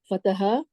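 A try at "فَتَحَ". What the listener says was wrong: फतहाउ नहीं, फतह।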